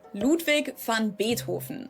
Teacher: The V in his name is pronounced the same as an F sound.